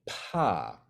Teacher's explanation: the reason you feel that puff of air coming out your mouth is because your vocal cords haven't started vibrating until after your mouth is opened